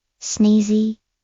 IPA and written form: ˈsniːzi (Sneezy)